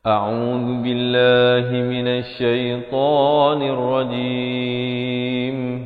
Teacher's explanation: Pastikan lafaz isti'azahnya itu hamzah di pangkal kerongkong, ain di pertengahan kerongkong, a'u, dzu di hujung lidah, keluar di antara dua gitu, dzubillah, dan lafaz jalalah dibaca nipis 2 harakat.